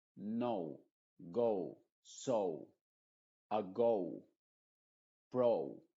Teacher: Y en inglés esa letra se pronuncia como O, es decir, una O y una U. Aunque la U no es tan clara como en español, no es tan cerrada, no es OU, sino que es como O, O. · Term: sonido original, sonido original de la